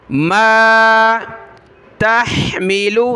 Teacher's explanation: ता को हा के साथ मिलाएं, हा को गले से निकालें. मीम ज़ेर लाम पेशलू.